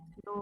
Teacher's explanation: mim dengan nun itu sifatnya tawasud atau bainiyah, tengah-tengah, mengalir sebagian, walaupun tidak ditahan ya. Dibaca dengan jelas, izhar tapi tetap alirkan mim atau nun.